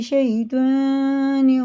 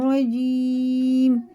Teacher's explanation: یا ساکن سے پہلے زبر ہے تو جلدی پڑھ دیا، اور یہ یا ساکن سے پہلے زیر ہے تو کھڑے زیر کی طرح کھینچ کے پڑھیں گے